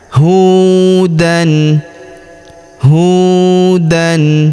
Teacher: Huruf hu kita panjangkan dua harakat karena terdapat wau sukun di depannya.